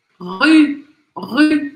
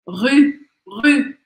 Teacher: esse outro som que também não existe em português, que é u, com biquinho. Então, o que você tem que fazer?